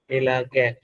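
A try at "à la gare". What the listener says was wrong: এটা এ না আ, accent গ্যাগ, আ,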